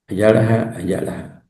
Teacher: Hay un saltillo, ¿verdad? Que marca una pausa en ayala.